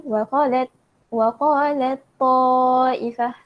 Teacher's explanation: Ada pertemuan huruf ta sukun dengan huruf ta yang berbaris. Jadi cara sebut dia kita kena tekankan, kita kena menebalkan huruf ta. Kena sabdukan huruf ta. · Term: idgham kamil